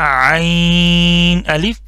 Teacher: हमजा का इसमें आवाज नहीं आनी चाहिए